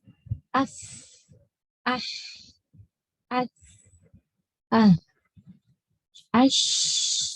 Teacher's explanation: Ketika kita menyebut hurufnya itu keluar nafas apalagi ketika dalam keadaan sukun itu pastinya jelas